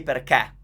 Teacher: So you will hear Italians say perché because they're from Milan and that's how they say perché. They just open all the E.